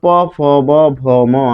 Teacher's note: তখন কিন্তু নিচের ঠোট লাগে আর উপরের ঠোট লাগে। নিচের ঠোটকে বলা হয় অধর এবং উপরের ঠোটকে বলা হয় উষঠ। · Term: উষ্ঠাধর